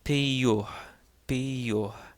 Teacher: the second iota in this word takes on a Y sound because it is followed by a short O, followed by a vowel.